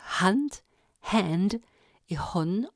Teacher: Au niveau de la glotte, le rapprochement des cordes vocales sans accolement donne le H soufflé sourd